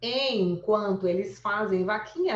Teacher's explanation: O em nasaliza o é, né? Então, o é a vogal. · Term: Ditongo fonético